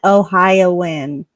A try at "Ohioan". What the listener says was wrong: Not in an N though. You said Ohio N.